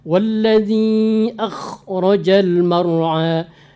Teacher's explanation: Yakhfa dengan akhraja harus sempurna. Kha benar-benar dihalak.